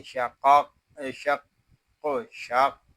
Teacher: यहाँ क़ाफ़ मुशद्दद है, इसको जमाव के साथ अदा करेंगे